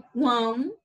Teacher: Quando a gente fala quão, ele, o som dele, ele sai mais pelo o nariz. Então, ele é um tritongo nasal